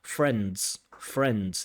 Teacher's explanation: We have a consonant cluster of three consonants, n, d, and z.